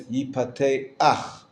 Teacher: The chet is only there at the end as the guttural that ends up the syllable. You don't vowelize the consonant itself.